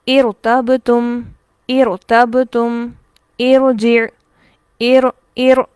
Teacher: عارضی کسرہ ہونے کی صورت میں را باریک نہیں ہوگا بلکہ موٹا ہی پڑھا جائے گا